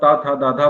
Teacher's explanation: अगर आप ता था दाधा बोलोगे जिह्वा आपके दांत की तरफ आएगी